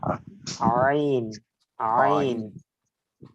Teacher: আইনটা উচ্চারিত হবে কণ্ঠনালীর মধ্যখান থেকে